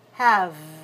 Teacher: Don't say ha, say have, because it's a content word, and you need to make the vowel long